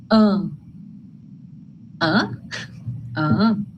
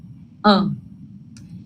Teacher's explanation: É um som em que o ar passa pelo nariz da gente. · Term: nasalizado